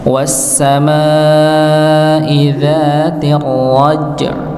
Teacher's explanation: Ya, was-sama ada alif bertemu dengan hamzah, maka sama dipanjangkan 4 atau 5 harakat. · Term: mad wajib